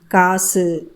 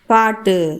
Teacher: சொல்லோட இறுதியில் வரக்கூடிய சில உகரங்கள் முழுமையாக ஒலிக்காம அரை மாத்திரை அளவுக்கு குறைந்து ஒலிக்கும் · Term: குற்றியல் உகரம்